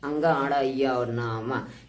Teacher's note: हर पंक्ति का जो है अंतिम अक्षर जो होता है वो नासिका से बोला जाता है। अंग अण य और न म ये सब नासिका से बोले जाते हैं।